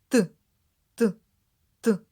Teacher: цей звук Не можна ні потягнути ні проспівати він точно вибухає дивись у дзеркало і вимовляй звук т язик піднімається за верхні